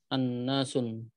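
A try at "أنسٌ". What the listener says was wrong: Bukan annasun, anasun. Nah, jadi jangan ditanwin ya nunnya. Anasun. Bukan annasun tapi anasun.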